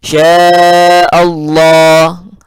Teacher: lamnya lamul jalalah mufakhamah, dibaca tebal lalu panjang, dua harakat mat tabi'i